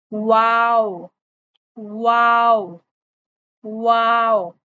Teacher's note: आपके हंठ मुकम्मल तौर पे गोल होंगे। इतने गोल होंगे कि आप उसमें बस एक पेंसिल रख पाएं।